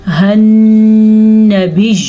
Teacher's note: باقی یہاں پہ نون میں آپ کے پاس شد ہے تو نون کے اوپر غنہ مسٹ ہے۔ غنہ کہتے ہیں اس آواز کو جو ناک کے اندر جا کے ٹھہر جاتی ہے